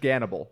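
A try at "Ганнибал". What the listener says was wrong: I think it's pronounced Hannibal. Hannibal? Erroneous G.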